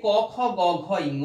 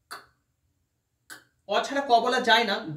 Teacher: বলতে গিয়ে জিভের গোড়াটা দেখো তালুর পিছন দিকে ঠেকছে, জিভের গোড়াটা একদম তালুর পিছন দিকে। তাই এটাকে আমরা জিভের মূল বা জিহ্বা মূলীয় ব্যঞ্জন বলি।